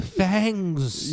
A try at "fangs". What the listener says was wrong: You gotta pronounce that N. You gotta hit that N real hard. because I wasn't sure what you were saying for a second.